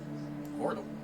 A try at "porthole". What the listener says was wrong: You're saying portal. That's porthole.